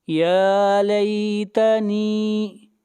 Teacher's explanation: نون کو کھینچ کر پڑھیں گے، یہاں پر یا مدہ ہے